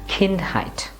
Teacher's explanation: Again, the stress should be on the first part, which is kind. Remember, ka, you have to exhale and say ka, kind.